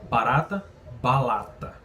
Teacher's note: Rotacismo, a palavra tem um R, mas eu troco pelo L.